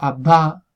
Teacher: Cuando yo digo abba con una verdadera oclusiva, el momento en el que yo estoy pronunciando la B, la boca está completamente cerrada, entonces no sale aire.